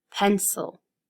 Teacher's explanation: Now with pencil, you hear the eh louder.